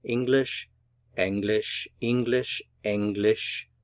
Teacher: remember stress on the first syllable